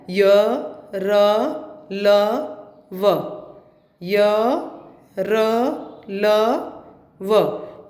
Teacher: अंतस्थ व्यंजन के उच्चारण के समय जीभ मुंह के अंदर किसी भी भाग को नहीं छूती। वो जो वर्ड है वो अंदर के अंदर ही रह जाते हैं, लेकिन जीभ हिलती नहीं, जीभ टच नहीं करती कहीं भी।